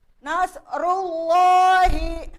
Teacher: dibaca tafkhim yaitu tebal ya karena lafadz Allah